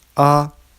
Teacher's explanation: The first tone is a high pitch with no pitch changes. A. I like to think of the next three tones as an experience.